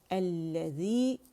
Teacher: الذی مد اصلی 2 کاؤنٹ، اس کی آواز نیچے جائے گی